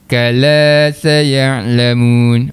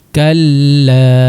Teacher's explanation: Maknanya kata lam yang kedua tu baris atas. Kaf baris atas tu masuk lam yang pertama dulu yang sukun, kal. Kemudian lam yang kedua baris atas, la. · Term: sabdu